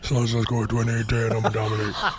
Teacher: So Shaq is breathy and bassy.